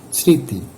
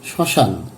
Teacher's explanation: ম এর উচ্চারণটা লুপ্ত হবে এবং অর্ধ চন্দ্রবিন্দু দিয়ে উচ্চারণ করতে হবে। সেই সঙ্গে আশ্রয় বর্ণটি সঠিকভাবে উচ্চারণ থাকবে।